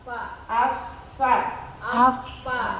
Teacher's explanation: Nah kalau ampos berarti dia bibirnya belum nempel. Bibir yang nempelnya juga bukan yang luar tapi bagian dalam.